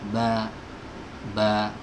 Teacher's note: Huruf ba ini ya keluar dari dua bibir yang dipertemukan ya, bibir atas dengan bibir bawah.